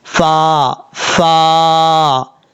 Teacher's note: فا کو پڑھتے ہوئے ہونٹ بالکل بھی گول نہیں کرنے